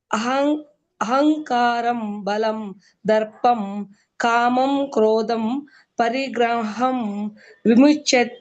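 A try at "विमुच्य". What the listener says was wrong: ವಿಸರ್ಗ ಇಲ್ಲ ಅಲ್ಲಿ, ವಿಮುಚ್ಚ ಅಷ್ಟೇ.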